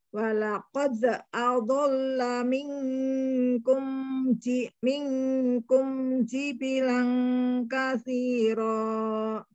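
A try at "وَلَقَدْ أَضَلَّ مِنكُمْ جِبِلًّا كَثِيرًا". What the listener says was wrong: Nah, boleh diulang lamnya datang jibilan ditekan jibilan. Ngerti masih ini Mbak Uti jibilan ditekan ada tasdid.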